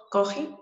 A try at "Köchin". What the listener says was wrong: Köchin, es con diéresis.